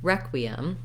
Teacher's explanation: here's another example of a word where we have the stress on the first syllable